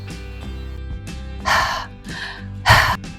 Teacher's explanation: It’s just breath with a TINY bit of friction from your voice box!